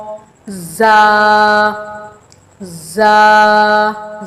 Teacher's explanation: زا کو تھوڑا سختی کے ساتھ پڑھیں گے اور لمبا کرنا ہے 1 الف کے برابر۔